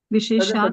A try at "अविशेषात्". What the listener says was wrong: अविशेषात, वो अ है।